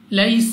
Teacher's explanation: یعنی جلدی سے سین کو سیٹی والی آواز کے ساتھ پڑھنا ہے